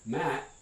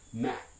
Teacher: And so for the voiceless ones, it can be a normal released, audibly released voiceless stop. It can be partially glottalized. It can be pre-glottalized. You can actually get a fully glottal stop, right? So if I'm looking at an English word that ends in, let's say, a coronal stop, a voiceless one, here's an underlying form for the English word mat, and I can pronounce that as mat, mat with a released final stop.